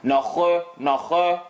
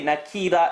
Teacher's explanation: Nakhira, it maintains its heavy characteristic, but the sound comes out from the side of your mouth. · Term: kha with a line